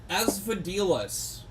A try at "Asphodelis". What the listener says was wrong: Unfortunately, you've pronounced the E in the Asphodelis wrong. Mispronunciation while in my presence.